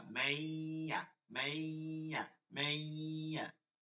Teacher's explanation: নুন আর উচ্চারিত হবে না, আপনি তো পরবর্তী অক্ষরকে মিলাচ্ছেন, তখন ইয়া উচ্চারিত হবে, সাথে গুণনা করতে হবে।